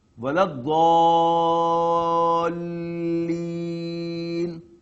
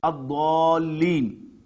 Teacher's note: Again, lam is not being pronounced, though it's written there, but not being pronounced.